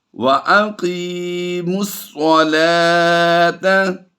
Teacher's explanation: لام کھڑی زبر لا کی آواز آتی ہے اور واو سائلنٹ رہتا ہے